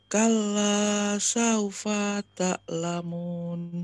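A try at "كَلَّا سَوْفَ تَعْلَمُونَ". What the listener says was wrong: Masih jeda itu terlalu panjang. Fata itu kepanjangan. Kalla saufata. Saufata. Saufata.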